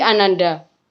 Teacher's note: dalam proses pengimbuhan akhiran da pada dasar anak, maka fonem k pada dasar itu menjadi lesap atau dihilangkan